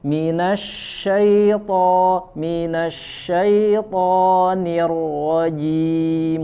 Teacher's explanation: Huruf tebalnya to, ro ditebalkan, diangkat pangkal lidahnya.